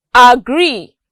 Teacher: the stress falls on gree